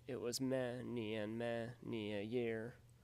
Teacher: two unstressed syllables followed by one stressed syllable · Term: anapests, anapasts